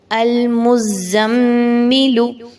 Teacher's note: کیونکہ ہم پڑھ چکے ہیں کہ میم مشدد ہو تو وہاں پہ غنہ کیا جائے گا، آواز کو ناک میں لے کے جایا جائے گا